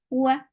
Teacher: The sound is very short. Wa, for wow circular lips, for fatha open jaws, the sound is short